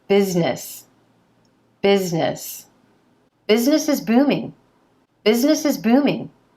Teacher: the s in the middle needs to sound like a z